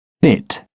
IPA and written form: bɪt (bit)